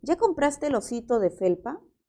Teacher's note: tenemos la entonación ascendente